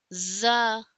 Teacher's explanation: It starts with the whistle-like sound and the sound comes out when we make closer the upper and lower front teeth and the tip of our tongue touches with the lower uh inner edges lower side inner edges of the upper front teeth.